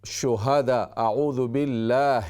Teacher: جیسے آدمی تھک جاتا ہے تو اس کو سانس پھول جاتا ہے یہ آواز آتی ہے تو یہ ہا کی آواز ہے